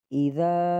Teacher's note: ذال جو ہے نرم ادا ہوگا، زبان کی نوک اوپر والے دانتوں کے ساتھ لگے گی